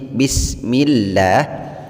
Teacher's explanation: lafadz Allah di dalam lafaz bismillah dibaca lah atau dibaca tipis karena huruf sebelum lafadz Allah yang berupa mim berharakat kasrah selain